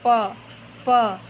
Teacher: जब मैं बोल रही हूँ तो मेरे दोनों ओठ एक दूसरे से टकरा रहे हैं, यानी ये ओठ से उच्चारित होने वाला शब्द है।